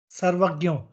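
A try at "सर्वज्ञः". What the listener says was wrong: See what is happening. Gakara is coming through. Little bit Jakara has to also sound there. Sarvagnyo, Sarvajnyo, like that. Sarvagnotina. Don't make it ga and na. So let little bit ya type of sound come through. Sarvagnyo, Sarvajnyo. Sarvajnyo also is okay.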